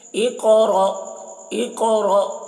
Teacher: इक़रा, यहाँ पर भी क़ाफ में क़ाफ को पुर पढ़ना है, क़ाफ में कलकला करना है, र को पुर पढ़ना है और हमज़े साकिना में झटका लगाना है